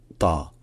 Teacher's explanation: un T avec la gorge qui est contractée. Donc ce n'est pas juste fitr, c'est fitr.